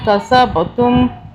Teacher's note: من طیبات ما کسبتم، با پہ قلقلہ کیا، با کو طاقت سے پڑھا